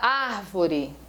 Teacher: Antepenúltima sílaba tônica, ela é uma proparoxítona.